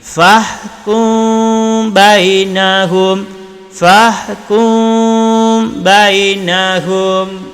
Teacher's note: Mim mati bertemu dengan ba. Jadi dengung dan bibir tidak rapat. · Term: ifa syafawi